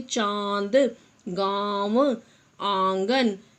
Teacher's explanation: इन वर्णों का उच्चारण हम अपने नाक और गले दोनों से करते हैं। मतलब हम जब बोलते हैं तो हमारे नाक और गले दोनों से इनका उच्चारण होता है। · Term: अनुनासिक